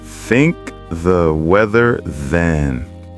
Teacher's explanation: than has voiced TH. Don't forget the vibration.